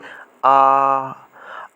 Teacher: विवृत स्वर, जिनके उच्चारण में मुख द्वार पूरा खुलता है